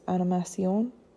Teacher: Even if it's a word like animation in English, we close it with that N, that consonant, but in French, it is animation, and we end that word with an O, making it open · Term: open syllables